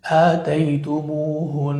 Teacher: فكثير من الناس يقرأ آتيتموهن وهذا خطأ وهذا خطأ في الوقف بل لابد من إظهار الغنة التي مقدارها حركتين لماذا لأن النون مشددة